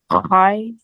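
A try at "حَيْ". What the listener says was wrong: Pronounce it from your throat. The ha is one of the throat letter. So it is hoi.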